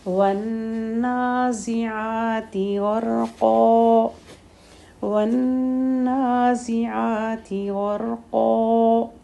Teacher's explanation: غین، را، قاف تینوں لیٹر ہیوی ہیں